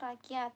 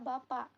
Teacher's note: Penyebutannya hamzah pada kata rakyat yang tidak disebutkan huruf K